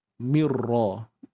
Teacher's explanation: masuk tanpa dengung untuk Nun tu makhrajnya akan lenyap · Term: Idam Bila Ghunnah